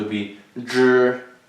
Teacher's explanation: So we pronounce will be zh. So same like z, but like you put your tongue behind.